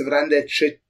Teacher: in the end, you basically end almost with a ch sound, like you don't have any sh left at all